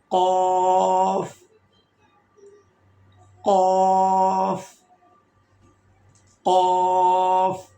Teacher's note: زبان کی جڑ جب اوپر والے نرم تالو سے لگے گی تو یہاں سے حرف قاف ادا ہوگا. یہ ہے اس کی مخرج.